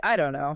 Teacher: In I don't know, the T in don't is almost never pronounced clearly.